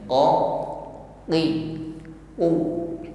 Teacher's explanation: Penekanan pada makhraj huruf itu sendiri. Qa, qi, qu tidak diucapkan dengan lemah atau diiringi dengan nafas. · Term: syiddah